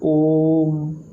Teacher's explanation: उच्चारण में ह्रस्व स्वर से 3 गुना समय लगेगा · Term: प्लुत स्वर